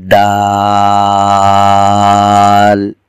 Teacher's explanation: دال زبان کی نوک کو اوپر کے دانتوں کی جڑ میں لگایا جائے گا اور 5 الف کی مقدار اس حرف میں آنے والے حرف الف کو لمبا کیا جائے گا، اور زبان کی نوک اوپر کے 2 دانتوں کی جڑ میں لگ رہی ہے۔